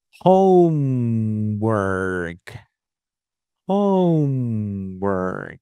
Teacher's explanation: I would say that both syllables are stressed